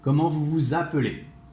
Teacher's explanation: you need to link it, like comment vous vous appelez, and the sound is a Z, even if it's an S.